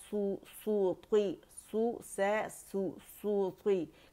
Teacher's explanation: सूती, सूती, complete rolling होगी लिप्स की